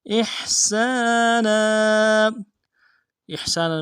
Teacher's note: احسانا میں حمزہ کو حا کے ساتھ ملانا ہے، حا کو گہرائی سے ادا کریں گے. سین کے ساتھ الف مدہ ہے، ایک الف دال میں کھینچیں گے.